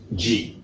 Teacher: ഡി അടുത്തത് ഇ ശരിയാണ് എഫ് ശരിയാണ് ജി മലയാളത്തിലെ ജിയുമായിട്ട് ചെറിയ വ്യത്യാസമുണ്ട് നാവിന്റെ സ്ഥാനം കുറച്ചുകൂടെ മുന്നോട്ടാണ് ഇംഗ്ലീഷിലെ ജി പറയുമ്പോൾ